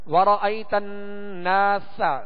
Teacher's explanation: سین کو سختی کے ساتھ اور باریک پڑھیں گے